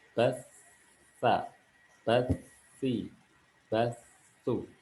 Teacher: Ketika sukun maka ujung lidah kita menyentuh pada ujung gigi seri bagian atas.